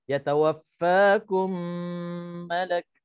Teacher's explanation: Cara bacaannya dengung 2 harakat. Dan dirapatkan bibir. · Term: idgham mislain